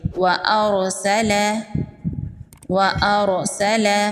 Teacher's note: یہاں پر را ساکن ہے، را ساکن سے پہلے زبر ہے، را ساکن کو پر پڑھیں گے۔